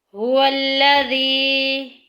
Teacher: یا ساکن پیچھے زیر آگی یا مدہ کا قاعدہ جاری ہو رہا ہے، ایک الف کے برابر لمبا کریں گے۔